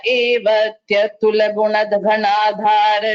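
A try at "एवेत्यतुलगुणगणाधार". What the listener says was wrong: You're getting, in some places there were a few mistakes like evetyatula, you said evatyatula.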